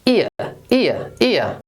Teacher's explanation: we have the short i followed by the schwa sound.